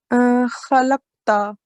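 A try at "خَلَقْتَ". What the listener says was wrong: So remember to do qalqala on this qaf. So it'll be jerk on qaf, khalaqta.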